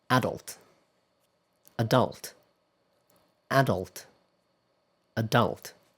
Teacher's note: British English usually places the stress on the first syllable on this word. And American English, however, often place the stress on the second syllable.